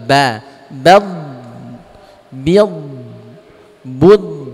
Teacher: Ba-nya jangan ikut-ikut tebal.